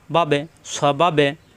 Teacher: বা এর সাথে বা সাকিন কলকলা হবে